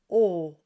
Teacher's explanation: the French has no diphthong, and it's very rounded in the front and very open on the inside, and you get O and not O. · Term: closed, long O